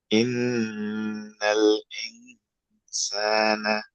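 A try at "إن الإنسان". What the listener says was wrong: Very good, মাশাআল্লাহ, good.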